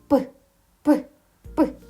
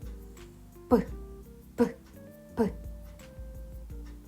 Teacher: Цей звук не можна ні потягнути, ні проспівати. Він ніби вибухає. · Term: звук П